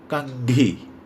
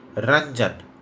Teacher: जैसे आप जब रंजन का उच्चारण करते हैं तो देखिए रंजन, र में जो एक बिंदी लगी है उसके उच्चारण में नाक में वाइब्रेशन होता है। नाक से आवाज़ निकलने के कारण अनुस्वार को नेजल साउंड भी कहते हैं।